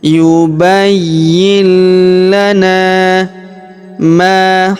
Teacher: Kemudian huruf na kita panjangkan dua harakat karena terdapat alif di depannya.